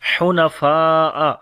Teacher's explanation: جائے تو پیچھے سے پھر ملا کر دوبارہ پڑھیں گے، حنفاء، ہا کو گلے کے درمیان والے حصے سے پڑھیں گے ، فا کو لمبا کریں گے، یہاں پر بڑی مد ہے